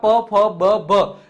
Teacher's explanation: જેમાં બે ઓષ્ઠ એટલે કે હોઠ છે એ કમ્પલસરી ટચ થાય તો જ તમે આ વ્યંજનને બોલી શકો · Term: ઓષ્ઠીય